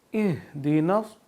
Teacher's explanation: اہدنا، اب یہ ہا ایک جو ہم پڑھتے ہیں نا رحمان اور رحیم، تو یہ ہا وہ والا نہیں ہے، یہ 2 آنکھوں والا ہا ہے، اس کو ہم اپنی آواز بھاری کر کے پڑھیں گے